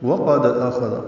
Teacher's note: قاف پر دال ساکن پہ قلقلہ